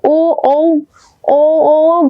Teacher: হ্যাঁ, কণ্ঠ তালব্য ধ্বনি। আর ও ও ও ও গলা থেকে শুরু হয়, কিন্তু বাড়ি খায় হচ্ছে ঠোঁটে, ওষ্ঠে বাড়ি খায়